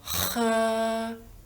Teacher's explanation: la H in cinese la leggiamo aspirata, quindi pronunceremo questo suono dalla gola facendo passare aria e diremo 喝.